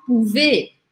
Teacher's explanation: Acabou com Z, mas esse Z aqui não é pronunciado. Ele faz com que o som do E seja aberto. Por isso eu falo pouvez.